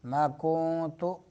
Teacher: کونت میں نون کو چھپائیں گے ناک میں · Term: اخفا